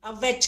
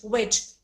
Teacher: When you say W, your lips are rounded. But when you when you say the letter V, then your upper lip, your lower lip should touch the upper teeth.